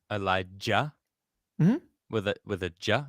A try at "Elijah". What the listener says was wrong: not ja that's not how it's pronounced it's with a hard j